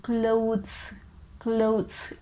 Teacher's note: we get this slight t h sound at the end